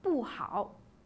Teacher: Le caractère pu, quant à lui, lorsqu'il se situe avant le premier, le deuxième et le troisième ton, garde sa prononciation originale, pu, au quatrième ton.